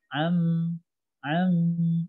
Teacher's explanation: ada dengung walaupun sebentar